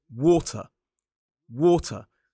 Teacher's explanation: 2 syllables, the stress falls on the first. · Now notice that I don't pronounce the R as an isolated word. The modern British RP accent is non-rhotic.